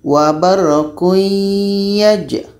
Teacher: secara proses bacanya ini tanwin bunyi tanwin masuk kepada ya Jadi ya ini membawa bunyi dengung daripada tanwin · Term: Idgham naqis